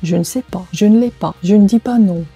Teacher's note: Обратите внимание, что в этих группах первый «э» выпадает.